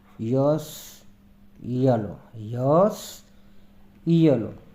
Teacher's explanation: hard palate એટલે કે કઠોળ તાળવાની નજીક. ય ધ્વનિનો ઉચ્ચાર જીભના આગળના ભાગને કઠોળ તાળવા એટલે કે હાર્ડ પેલેટ ની નજીક લાવીને કરવામાં આવે છે. ની નજીક લાવીને કરવામાં આવે છે, તેથી તેને પેલેટલ કોન્સોનન્ટ એટલે કે તાલવ્ય વ્યંજન કહેવાય છે.